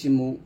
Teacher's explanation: পেশ উচ্চারণ করতে গেলে আপনার ঠোঁট গোল হবে পেশ উচ্চারণ করলেই ঠোঁট গোল হবে যেমন মিম পেশ মু যত